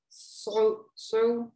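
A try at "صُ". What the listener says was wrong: you see how you're going in your throat? You're going so, so. No, it's just like saying soup, like soup. I want to eat some soup, but heavy soup. Okay, dhamma, soup, soup. Okay, but don't go in your throat. As long as you're not saying so, so, that's fine.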